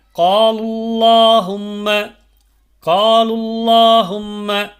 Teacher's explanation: கடைசியில் பாருங்கள், காலுல்லாஹும்ம, காலுல்லாஹும்ம, இங்கே அந்த காலு அப்படின்னு இருக்க இடத்துல அந்த வாவு அடுத்த இருக்கக்கூடிய அந்த அல்லாஹும்மோடு சேர்றதுனால அந்த வாவு உச்சரிக்கப்படாது. அதுக்கு அடுத்து வரக்கூடிய அல்லாஹும்மல இருக்கக்கூடிய அலிஃப் உச்சரிக்கப்படாது.